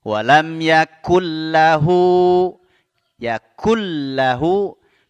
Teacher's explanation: nunnya langsung melebur ke lam ya tanpa disertai gunah ini disebut dengan Idgham Bila Ghunnah Naam walam Yakun lahu hu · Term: idgham bila gunnah